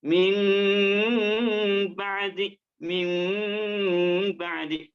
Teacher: Maka bacaan iqlab yang sempurna adalah nggak cukup digantikan mim ba'di, panjangnya 2 harakat, mim ba'di, dan sempurnakan dengan suara keluar dari makhrajnya, yakni al-khaisum, mim ba'di. Kombinasikan antara mim, bibirnya keduanya dirapatkan, suaranya keluar dari rumah hidung.